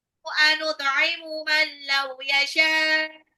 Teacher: mannya itu adalah nun sukun ketemu lam adalah idgham bil ghunnah. Yasha'u, shinnya adalah mat wajib mutasil.